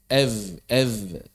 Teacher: V itu menjaharkan F. Mengubah hamsnya menjadi jahar.